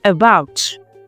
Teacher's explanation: when we articulate the syllable about, we can notice that the pitch of our voice rises. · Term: strong syllables